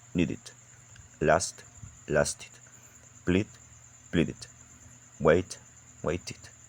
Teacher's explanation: the extra unstressed vowel sound makes them very easy to pronounce